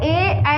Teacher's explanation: कंठ और तालु के संयोग से ए, ऐ बोले जाते हैं